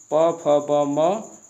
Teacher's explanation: इसका उच्चारण स्थान होता है ओठ, जिसे हम लोग ओष्ठ वर्ण कहते हैं।